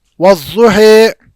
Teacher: اب اگر آپ امام ورش کی روایت میں پڑھیں گے تو وہاں پر فتح کسرہ کی جانب مائل ہوگی اور الف یا کی جانب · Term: امالہ